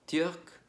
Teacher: Y en cuanto a la pronunciación, pues simplemente darnos cuenta de que se alarga un poquito más la última consonante